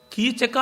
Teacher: ಕೀಚಕ ಅಂದರೆ ಇವಳು ಯಾರು, ಇವರು ಕೀಚಕನ ಸಹಾನುಭೂತಿ ಪರರ ಅಂತ ಮತ್ತೆ ಗಂಧರ್ವರಿಗೆ ಹೇಳಿದರೆ ನಮಗತಿ ಏನಾಗಬೇಕು. ಕೀಚಕ ಅನ್ನುವಲ್ಲಿ ಕ ಮತ್ತೆ ಕಿ ಮತ್ತೆ ಕ 2 ಕಂಠ್ಯ ವರ್ಣಗಳು, ಚ ಬಂದು ತಾಲವ್ಯ ವರ್ಣ.